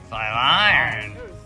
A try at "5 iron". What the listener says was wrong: You put the emphasis on the wrong syllable.